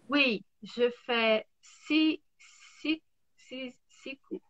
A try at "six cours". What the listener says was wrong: 6 cours? C'est bizarre, mais c'est comme ça. On ne prononce pas le X parce que le prochain mot commence par un C. Donc je dis 6 cours. 6 cours. 6 cours.